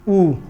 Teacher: समृत स्वर मुंह लगभग क्या रहता है, बंद रहता है, यानी मुख लगभग बंद रहता है